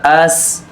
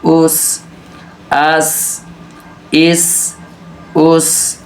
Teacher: سین حروف صفیریہ میں سے ہے, اس کو ہم نے پر کرنا ہے, یعنی اس کو ہم نے سیٹی کے ساتھ ادا کرنا ہے